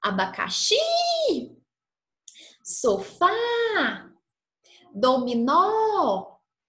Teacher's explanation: todas essas palavras têm a última sílaba tônica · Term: oxítonas